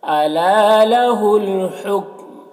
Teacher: لہ الحکم یہاں پر قف ٹھہرنے کے لیے ہے، ٹھہریں گے تو میم کا پیش سکون سے بدل جائے گا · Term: وقف